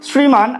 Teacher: তালব্য স এর সাথে যদি র ফলা যুক্ত থাকে সেক্ষেত্রে দন্ত স এর মতো উচ্চারিত হয় সটা। শ্রীমান, আমরা তালব্য স লিখি ঠিকই, কিন্তু শ্রীমান দেখো দন্ত স এর মতো উচ্চারণ করি।